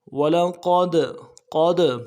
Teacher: دال کے جب ساکن ہو تو قلقلہ ہوگا, قلقلہ کریں گے.